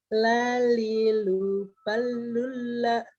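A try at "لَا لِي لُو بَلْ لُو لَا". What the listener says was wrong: Balnya sukun, Bu. Sudah aja. Bal.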